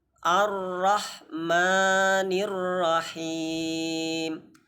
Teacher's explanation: Ar tidak boleh. Ar-rah ha-nya tipis, yang tebal hanya huruf ra di situ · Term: ra tebal